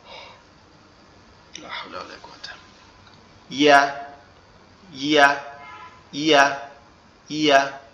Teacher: ইয়াটা হচ্ছে আমাদের জিহ্বার মধ্যকান উপরের তালুর সঙ্গে লাগবে। তো জিহ্বার মধ্যকান উপরের তালুর সঙ্গে লাগাইতে হলে আমাদের দাঁতের দুই পাটি একসাথে লাগিয়ে রাখতে হবে।